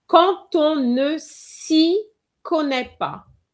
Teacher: Well, I said on, but it could be any word beginning with a vowel. You will have the D changed into a T sound.